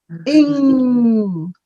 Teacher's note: that NG sound, your tongue goes up to the roof of your mouth and it's sort of it's at the back there and the sound is like ing.